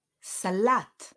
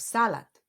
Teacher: the stress falls on the second syllable